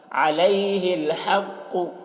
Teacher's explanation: ہا کو حلق سے ادا کریں گے، قوف کو پر پڑھیں گے کیونکہ قوف حروف مستعلیہ میں سے ہے